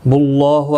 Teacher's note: اللہ کا لام پر پڑھا جائے گا اور اس کو ایک الف کی مقدار کے برابر کھینچ کر بھی پڑھا جائے گا کھڑی زبر کی وجہ سے